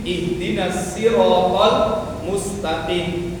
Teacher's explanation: Shadnya tipis jadinya sin. Ihdinasiratal mustaqim. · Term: lahn jali